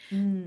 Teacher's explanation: So the M is also bilabial. It starts with the two lips together